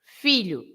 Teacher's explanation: the O at the end of a word is always this sound U, right? So the sound of the O is U.